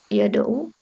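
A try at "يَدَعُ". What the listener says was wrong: yada'u, da'nya di fathah ya. Iya, bukan disukun dalnya tapi di fathah yada'u. Bukan yada'u. Kalau wada dari kata wada'a. Wada'a itu wada'a yada'u. Wawnya itu hilang.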